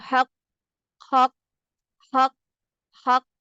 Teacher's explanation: حق ق ہو ہی نہیں سکتا نا اس طرح سے. تو پہلا جو لیٹر ہے اس کے اوپر قلقلہ نہیں کیا جاتا, دوسرے لیٹر پر قلقلہ کیا جاتا ہے